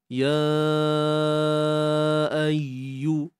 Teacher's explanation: mad jaiz munfasil, dibaca dengan kadar 4 atau 5 harakat. Ya ayyu, kemudian ya bersabdu di sini beri sedikit penekanan bagi menampakkan unsur tasydid pada ya tu.